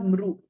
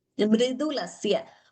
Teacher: Karmedam mridulasya mri. It should not be pronounced as mru.